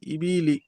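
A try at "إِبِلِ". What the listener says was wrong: ইবিলি কোন টান হবে না ইবিলি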